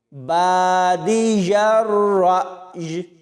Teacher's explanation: را کے بعد حمزہ ساکن ہے تو یہاں جھٹکا دے کر پڑھا جائے گا، اور آخر میں دیکھیں جب یہاں پر وقف کرنا ہے تو یا کے نیچے اس زیر کو نہیں پڑھنا۔